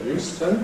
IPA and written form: ˈjuːstən (Euston)